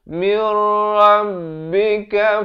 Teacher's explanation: Haqqumir, di sini idgham bila gunnah, masuk tanpa dengung, daripada min rabbika jadi mir.